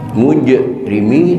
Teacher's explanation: qalqalahnya qalqalah sughra karena mati asli, bukan karena diwaqafkan